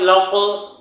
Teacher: دیکھیے آواز قاف کی میں نے 2 بار نکالی کیونکہ قاف حروف قلقلہ میں ہے اور اس پر جزم لگا